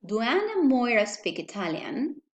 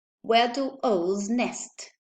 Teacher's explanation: the do is with the vowel u because it is followed by a vowel sound or a semivowel